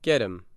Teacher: the letter H in him disappears and the vowel sound in that word is shortened and the letter T and get changes to add sound in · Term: reduced